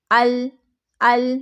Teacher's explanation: اب اگر ہم اس کو شدت کے ساتھ پڑھیں گے تو ال، ال، جلدی سے آواز بند ہو گئی ہماری تو شدت پیدا ہوگی